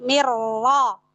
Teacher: Tapi kalau nyebutinnya dari sisi pertemuan dua huruf, maka di situ terjadi hukum idgham mutaqaribain kamil bila gunnah. Lalu ketika masuk tasydid pada huruf ro, ro-nya tebal. Kenapa? Karena ro di situ berharokat fathah.